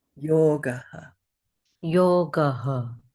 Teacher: what the visarga does is it adds a breath sound to that previous vowel